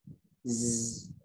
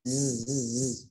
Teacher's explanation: Ada suara desiran, suara yang menyerupai lebah. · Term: huruf za